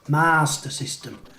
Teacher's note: There's no R between the A and the S in master. It's not Mars.